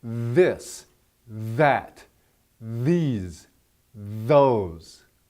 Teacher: you stick your tongue between your teeth and blow air out. And vibrate your vocal cords.